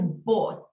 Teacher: Una O bien redonda, bien larga, bought, ¿ya?